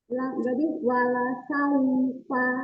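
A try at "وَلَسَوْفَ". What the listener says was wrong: Ya, wala sau bukan sau, tapi wala sau tidak membulat tapi dengan dimajukan kedua bibirnya.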